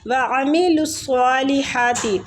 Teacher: تو عین وسط الحلق سے، مطلب حلق کے درمیان والے حصے سے · عین حلق سے نکالیں گے